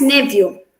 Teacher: Coming to these two words, in the first word, the PH sound, rather than pronouncing it as f, the PH sound is pronounced as v in this word